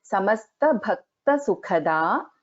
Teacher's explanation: Bha and Kha are Mahapranas here.